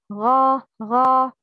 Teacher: The first characteristic is الاستعلاء, an elevation of the tongue to the upper soft palate when pronouncing a letter